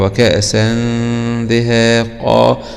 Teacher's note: الغنة هنا تكون مرققة لأن حرف الدال من حروف الاستفال.